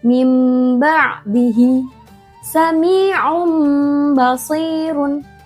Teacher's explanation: Dibacanya dengung dan mengubah nun sukun atau tanwin menjadi mim. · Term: iqlab